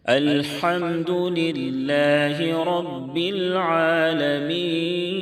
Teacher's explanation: اللہ کے لام سے پہلے زیر ہے، اس لیے اللہ کے لام کو باریک پڑھیں گے، پتلا پڑھیں گے